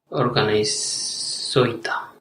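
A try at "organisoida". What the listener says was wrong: Organizoida. Yes, very good.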